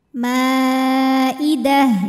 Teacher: ta marbutah walaupun harakatnya tanwin fathah ya berhentinya jadi ha sukun